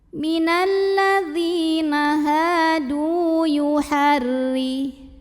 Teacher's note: Huruf ra dibunyikan secara tarqiq sebab barisnya kasroh, maka bacanya tipis, pangkal lidah datar, tidak perlu naik.